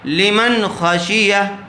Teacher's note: خا حروف حلقی میں سے، حروف حلقی کے 6 حرفوں میں سے نون ساکن کے بعد خا آیا ہوا ہے، اس لیے نون کو ظاہر کر کے بغیر غنّے کے جلد پڑھیں گے